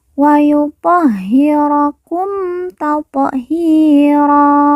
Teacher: Ha yang bertasydid kita baca ditekan dan ditahan 2 harokat.